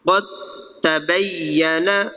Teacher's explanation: یہاں پہ دال اور تا کٹھے ہو گئے تو مخرج ان کا ایک ہے تو یہ متجانسین